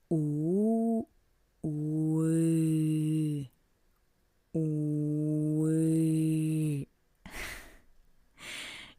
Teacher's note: pronounce u at first and then change the position of the lips, extend them. This is the way you can pronounce the Russian u.